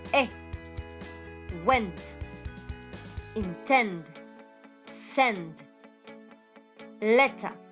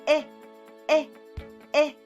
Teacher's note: it is also here I need something in the middle okay it's not completely high it's not completely low it's not completely closed or open but it is surely to the front